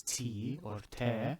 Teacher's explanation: This is the te, and when you pronounce T or te, you will feel that the tip of your tongue is touching your palate just behind your upper teeth